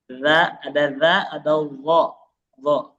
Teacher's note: cara pelafalannya ujung lidahnya agak digigit dikit ya, mirip dengan dalal. Cuman kalau d ini versi yang lebih tebalnya. D ini adalah dalal versi tebal gitu. · Jadi dho kurang lebih cara pelafalannya ujung lidahnya agak digigit dikit. Ya. Mirip dengan zal.